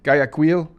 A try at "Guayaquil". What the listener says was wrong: Well, it's actually Guayaquil. Guayaquil. Without the U in. Guayaquil.